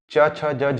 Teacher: आपके जो जीभ का जो ऊपरी हिस्सा है वो तालु को टच करता है, च छ ज झ, तो इसलिए ये है तालव्य।